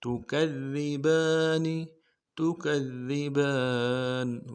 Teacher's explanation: ता को नर्म से अदा करना है, काफ को दाल के साथ मिलाएंगे, दाल के ऊपर तशदीद है, जोर देंगे, अगले दाल को बारीक अदा करना है, बा के ऊपर खड़ा ज़बर है, एक इंतजार में खींचेंगे, नून को नर्म से अदा करेंगे।